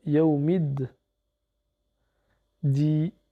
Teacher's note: on va faire la liaison, pas avec le alif, ni avec le lem, mais avec le dal, vu que c'est une lettre solaire